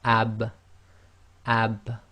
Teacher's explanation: you can feel the wet portion of your lips come together